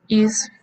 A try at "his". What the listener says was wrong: No is. ¿Qué le dije de la H? His.